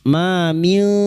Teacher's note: Ma min syafi'in illa min ba'di idnih. Ma min, ma fathah diikuti alif 2 harakat mat tabi'i